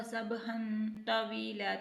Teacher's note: النہار سبحا، ہا ہے، ہا کو الگ سے ادا کرنا ہے، دو زبر کی تنوین ہے تو یہاں پہ غنہ بھی ہوگا کیونکہ تنوین کے بعد تو آ رہا ہے تو یہاں پہ غنہ لازمی ہوگا، سبحا طویلا، تو کو موٹا